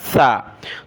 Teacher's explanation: دانتوں سے زبان کی نوک باہر نکالی، نرمی کے ساتھ پڑھا